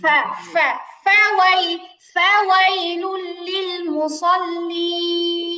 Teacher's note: তানবিনের পরে লাম আসছে ইদগামে বেলা গুন্নার হরফ এজন্য গুন্না ছাড়া মিলায় পড়তে হলো